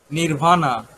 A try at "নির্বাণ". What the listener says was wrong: স্যার এটার নির্বাণ বলে, নির্বাণা না, উচ্চারণটা মনে হয় মিস্টেক। নির্বাণ, কিন্তু উচ্চারণে নির্বাণা।